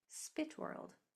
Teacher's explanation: You don't even hear the o, just the w and the r.